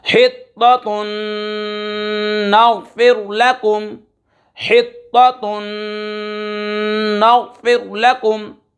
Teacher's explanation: دو پیش کی تنوین کے بعد نون حروف یرملون میں سے آ رہا ہے، ادغام یرملون مع الغنہ ہوگا